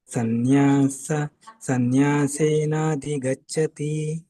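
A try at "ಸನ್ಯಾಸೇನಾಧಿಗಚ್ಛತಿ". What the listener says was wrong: ಮಹಾಪ್ರಾಣ ಸ್ವಲ್ಪ ಪ್ರಾಕ್ಟೀಸ್ ಮಾಡಿ ಉಳಿದಿದ್ದೆಲ್ಲ ಚೆನ್ನಾಗಿ ಬಂತು ದೊಡ್ಡದು ಹೇಗೆ ಮಹಾಪ್ರಾಣ ಹೇಳಬೇಕು ಅನ್ನೋದನ್ನ ನೋಡಿ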